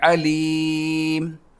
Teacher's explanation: جب اسٹاپ کریں گے تو سیکنڈ لاسٹ نمبر پر یا ہے تو اس پر مد کریں گے